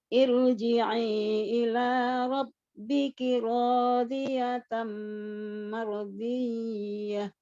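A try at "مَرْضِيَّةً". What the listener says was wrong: Ya, tasdid harusnya tidak boleh dengung. Marodiyah. Jadi ada bedanya kalau nun sukun atau tanwin ketemu ya memang kita dengung. Kalau enggak ya sudah tidak.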